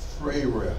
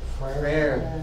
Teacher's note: R is rolled with the uvula, whatever that is, the thing in the back of your throat.